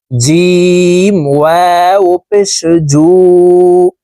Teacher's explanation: জিম হরফের উচ্চারণ জিহ্বার মধ্যখান থেকে পড়তে হবে